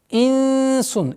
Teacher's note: мягкая ихфа в размере 2 огласовок, назализацию. Потом у нас появляется правило ассимиляции частичной назализации в размере 2 огласовок, назализацию удерживаем.